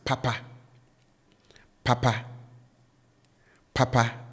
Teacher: the tone with which I pronounce both syllables are up. So they are high